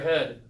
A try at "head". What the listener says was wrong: Oh, close your teeth. Head. Head.